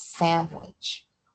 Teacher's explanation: which is spelled with an N, but the way it's pronounced is sandwich with an M and then the W